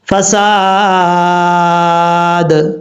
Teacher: جب یہاں پر فساد کے دال پر وقف کریں گے تو دال ساکن ہو جائے گا، جب ساکن ہوگا تو اس میں قلقلہ بھی ہوگا